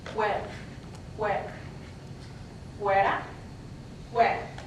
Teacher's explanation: sometimes you'll hear in the Andean region a bilabial pronunciation, where your two lips touch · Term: bilabial pronunciation of F